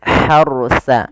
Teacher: kemudian hati-hati di dalam melafalkan ronya ini bukan harsa tapi hartsa rnya ditebalkan karena ada huruf ro sukun didahului dengan fathah